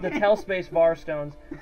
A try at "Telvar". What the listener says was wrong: No. As in Telvar. You don't actually say the word space. No, Tel space var.